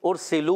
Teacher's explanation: سین سیٹی کے ساتھ ادا ہوتا ہے